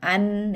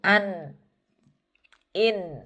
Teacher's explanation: an dia tertutup tapi suaranya sebagian lewat di rongga hidung, sebagian lagi nanti kalau sudah ini dibuka baru keluar lewat sini.